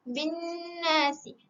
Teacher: dekat nun tu kita dengungkan dia. Kita wajib dengungkan dia sebab dia ada sabdu kat situ. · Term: idgham wajibul gunnah